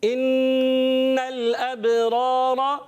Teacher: یہاں پر ایک الف کا غنہ ادا کریں گے, لام کو ہلائیں گے نہیں · اور پیارے بچوں را پر زبر, اس کو پر پڑھیں گے, اور دوسری را پر بھی زبر, مگر پہلا را جو ہے وہ الف مدہ والا ہے, اس کو ایک الف کھینچیں گے